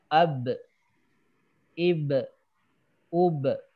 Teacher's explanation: jadi bunyi E itu hanya efek dari memantul